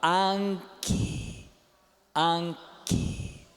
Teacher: Só que não nasaliza o A, não é é an. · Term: nasal velar com ganchinho